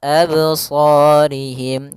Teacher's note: pada lafal qalqalah ini tidak boleh ada hamzah tambahan